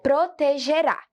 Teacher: a sílaba mais forte é aqui, no rá